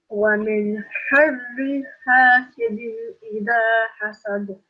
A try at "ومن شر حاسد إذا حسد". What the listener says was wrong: Again, you don't pronounce the noon sound. It's ikhfa here. You have a nasal sound. Try again. And this is a qalqala letter, so you have a slight qalqala here. Hasad.